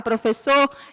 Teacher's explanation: eu vou perceber que a sílaba mais forte quando eu falo a palavra professor é a última sílaba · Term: sílaba tônica